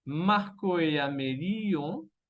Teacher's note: Y la I se va a conectar con la vocal nasal ON.